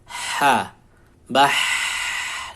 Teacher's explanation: Sifatnya dia nafasnya mengalir dan suaranya pula mengalir, rakhawah. Ha, bah itu suara dan nafas yang mengalir.